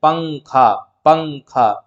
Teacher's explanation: जैसे हम पंखा कहते हैं और इसमें हमारी जुबान जो है ऊपर के मसूड़े में नहीं लग रही है · نون کی آواز کو ناک میں چھپا کر پڑھنا چاہیے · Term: اخفاء